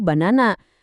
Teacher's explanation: Daya puncaknya kumpul semua di tengah. Akibatnya bagian depan dan belakangnya langsung lapuk jadi schwa barengan.